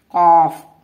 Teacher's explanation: زبان کی جڑ جب یہ اوپر کے نرم تالو سے جا کر لگتی ہے تو یہ حرف ادا ہوتا ہے قاف